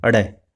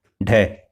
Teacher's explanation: अडय जो है वो मूर्धन्य सघोष है, अल्प प्राण है, और ढय जो है वो मूर्धन्य सघोष और महाप्राण है। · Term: उत्तक्षिप्त व्यंजन